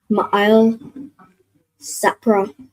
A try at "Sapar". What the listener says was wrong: So not Sapra, but that last part. So Sa and then the Pa and Ra are joined. So what sound would that make with the Pa and the Ra joined?